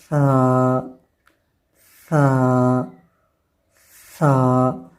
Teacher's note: مثلا دیکھیں ہم پڑھتے ہیں سا سا سا، اب زبان کی جو نوک ہے وہ سامنے والے 2 دانتوں کے سروں سے لگ رہی ہے · سا کا مخرج کیا ہے کہ زبان کی نوک جب اوپر والے جو 2 دانت ہیں ان کے سروں سے لگے